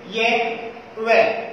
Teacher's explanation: कहीं भी वायु को वाग यंत्र से या मुख से बाहर निकलने में संघर्ष नहीं करना पड़ रहा है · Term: संघर्षहीन व्यंजन